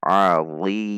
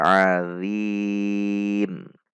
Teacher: Ada tegang pangkal lidah sehingga perubahan dari sifat huruf atau posisi lidah bisa mengubah huruf dari dha menjadi dzal dengan titik makhraj yang sama namun sifatnya atau posisi belakang lidahnya yang berbeda.